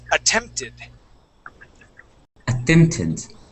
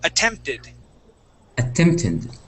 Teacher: that e d at the end that is an ID sound okay this yeah this T changes to a d so one